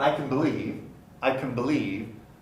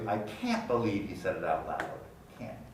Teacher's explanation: the contrast is in how clearly you pronounce the vowel